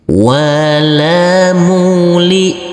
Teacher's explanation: Huruf hamzah sukun ini tidak boleh ada suara tambahan.